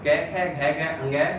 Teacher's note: तो ये सब जो है हमारे उच्चारण स्थान कंठ में होंगे